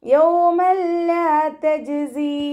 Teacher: തെൻവീനിലുള്ള നൂനിൻ്റെ സൗണ്ടിനെ ലാമിലേക്ക് ചേർത്തി കൊടുക്കണം, ലയിപ്പിച്ചു കൊടുക്കണം. പക്ഷെ നമ്മളവിടെ മണിക്കാൻ പാടില്ല കേട്ടോ. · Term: ഇദാം ബിലാഗുന